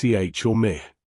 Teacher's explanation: the ich laut, softer and more frontal, in words like ich or mich